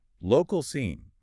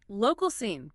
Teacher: The stress is usually on local.